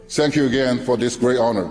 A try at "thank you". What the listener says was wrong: He still makes the common mistake of TH, thanks. This one is a hard one for non-native speakers, and I always encourage my students to really practice this sound.